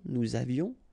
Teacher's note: It's avait. Nous avions, final S not pronounced, and then little liaison.